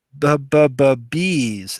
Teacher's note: the b b sound is voiced it's a stop